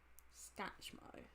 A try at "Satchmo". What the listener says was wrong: No, but there's no. You're saying Scatchmo. Where's the C after the S? Satchmo. Satchmo. If I told you that it was short for satchel mouth, but there you can see why it's Satchmo.